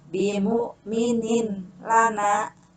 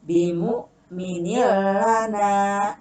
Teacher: ini suara tanwinnya dimasukkan ke dalam suara huruf lam, tidak boleh dibaca bimu'minin lana, tapi bimu'minillana, seperti itu ya.